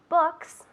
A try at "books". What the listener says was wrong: Books, un poco más largo. Books. Books. La B, los labios juntos, ¿no?